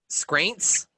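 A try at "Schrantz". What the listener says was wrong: It's Shrance. It's not like school. Shrance. Like schedule.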